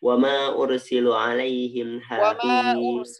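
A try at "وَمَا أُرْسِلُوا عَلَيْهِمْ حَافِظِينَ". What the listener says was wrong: wa ma ursilu lu ya panjang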